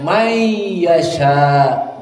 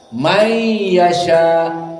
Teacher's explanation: This the idgham. Coming nun to the ya.